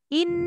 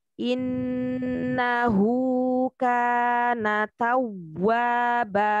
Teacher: Dan pada penekanan nun bertasdid dia hanya ditahan saja ya, nadanya jangan sampai 3 harokat. 2 sampai 3 dia ditahan saja.